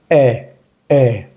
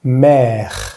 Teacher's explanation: La pronunciación de este acento simplemente es la boca, como si fuera a decir una E en español, pero un poco más abierta la boca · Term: acento grave